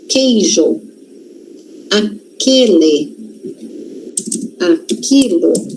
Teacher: Esse U não tem som. A gente não escuta o som do U. A gente escuta o som do K.